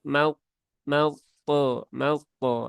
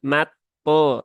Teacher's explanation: Langsung ke huruf po yang diberikan tasdid karena terjadi idgham ya, idgham dari lam ke huruf po atau idgham syamsi atau huruf lam syamsiah dan langsung ya, langsung mau po mau po ya, bukan mat po tetapi mau po ya.